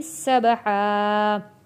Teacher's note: با حروف قلقلہ ہے، آواز واپس پلٹ کر آئے گی